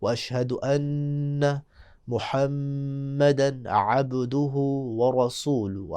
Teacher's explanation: واشہد ان پہ غنہ کریں گے، محمدن پہ بھی غنہ کریں گے